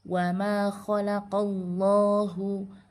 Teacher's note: Nah, di yang lafaz Allah yang pertama wama khalaqallahu. Sebelum lafaz Allahnya berharakat fathah, maka lafaz Allah yang ini dibaca tafkhim atau dibaca tebal.